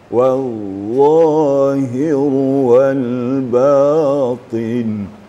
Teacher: Sod dot ta walaupun baris bawah tapi tetap tebal bunyinya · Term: itba